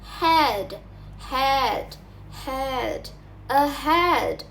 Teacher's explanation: And finally, there is H. The sound H is different because it is produced in the glottis, which is in the throat.